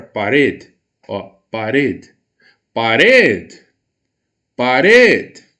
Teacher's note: a sílaba rede é mais forte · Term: sílaba tônica